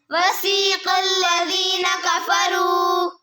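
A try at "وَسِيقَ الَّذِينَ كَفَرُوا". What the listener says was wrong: बेटे अल्लाह नहीं है, लाम अकेला है। अल्लाह को मोटा अदा करना है, लाम को नहीं। वसीक़ल्लज़ीना कफ़रू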